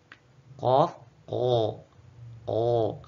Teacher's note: Yang pertama yang paling hujung dekat dengan tenggorokan yaitu huruf qaf